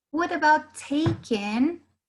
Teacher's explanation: the stress is more in the first syllable of the verb